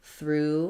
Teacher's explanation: So for through, I rewrite this sometimes as through, like we see in drive-through, or you can think about it like through with two O's, because even though there's lots of letters here, we actually just have the voiceless TH, the R, and the oo sound